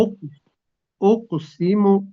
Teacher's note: इसमें कलकला आएगा जी काफ में, और सीन से जी सीटी की आवाज आनी चाहिए